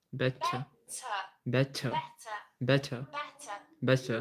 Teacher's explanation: in the ending we don't pronounce the R